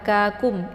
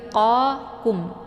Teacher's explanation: Nah, kum ini dibaca tipis ya, karena yang pertama yaitu qa tebal, jadi pangkalnya itu diangkat ke langit yang lunak